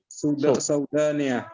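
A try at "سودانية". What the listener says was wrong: Sudaniyatun. Lidzalika ba'da sin waw. Limada libayani harakatim harfi sin bit dhammah. Sudaniyah. Nah, Sudaniyah.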